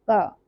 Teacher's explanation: क की जो स्वर है वह कंठ से निकल रहा है। तो ये कंठ वर्ण का उच्चारण स्थान है।